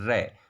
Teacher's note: जब र बोलते हैं तो हमारी जीभ कंपन करती हुई नीचे गिरती है। इस कारण से र को हम प्रकंपित व्यंजन भी कहते हैं।